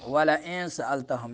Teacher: نون کو ناک میں چھپائیں گے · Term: اخفا